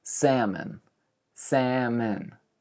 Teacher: the O kind of turns into an E-like sound.